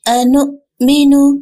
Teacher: حمزہ کو لمبا نہیں کریں گے